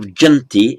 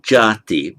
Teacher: And it makes its verbal noun, it has many verbal nouns, it adds a T, but instead of janti, it becomes jati. The N drops out and the A lengthens.